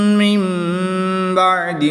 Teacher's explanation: نون ساکن کے بعد حرف با آ گیا تو یہاں پہ نون ساکن کو میم سے بدل کر اخفا کر کے غنہ کر کے پڑھیں گے